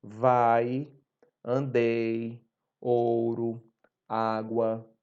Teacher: esses sons átonos, que são de I e U, dessas semivogais, eles se unem a uma vogal, formando uma só sílaba. Então, observem bem que sempre I e U vão estar junto de vogais, porque elas possuem um som tão fraco que elas precisam se unir a uma vogal para poder realmente ter uma produção de sons.